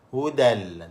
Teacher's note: Tanwin tu sudah hilang, dimasukkan ke dalam lam secara sempurna. Jadi tak bunyi dah tanwin. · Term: Idgham bila gunah